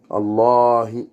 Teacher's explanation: le ha dans la profondeur de la gorge, qui fait trembler la poitrine en même temps qu'on prononce